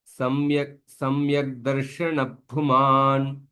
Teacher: Visarga followed by Pakara or Phakara. You don't pronounce that Visarga fully. The Ardha Visarga.